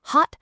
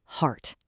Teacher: the short hot versus the long deep heart